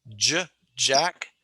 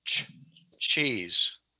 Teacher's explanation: J, like when you say my name, Jack, that's voiced. And if you say cheese, ch, that ch is unvoiced.